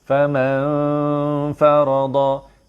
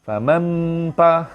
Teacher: Bibir bawah bertemu gigi atas untuk menghasilkan bunyi fa yang betul.